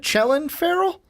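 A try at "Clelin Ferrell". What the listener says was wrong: No, I said Clellan. Chillin? Did you actually say Chillin? Chillin Farrell? Where do you see the H?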